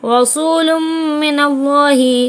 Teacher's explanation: ادغام مع الغنہ ہوگا، ملا کر پڑھنا ہے غنے کے ساتھ